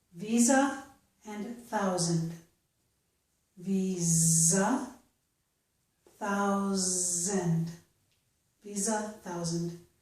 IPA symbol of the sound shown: z